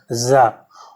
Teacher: और ये कौन कौन से हैं, तो जा, मैंने आपको बताया इसको जो है जा ऐसे बोलते हैं, जा सीधा सीधा नहीं बोलते हैं, इसमें जीभ आपकी थोड़ी सी कंपन करेगी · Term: आगत व्यंजन